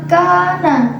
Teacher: Selanjutnya pada lafaz kana terdapat hukum bacaan mad tabi'i karena ada huruf alif sebelumnya berharokat fathah dan dibaca panjang dua ketukan